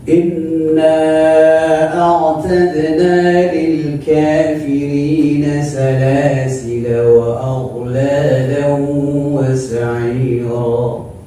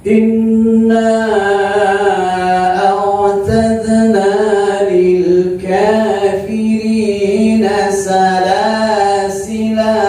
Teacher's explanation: Jadi kalau wasal dibaca, kasar dipendekkan, kalau waqaf dipanjangkan.